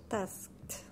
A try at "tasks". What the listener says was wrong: And again, it's the S, mm-hmm. Consonant S. Tasks.